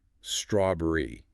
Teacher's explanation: with strawberry, make sure that stress is right at the front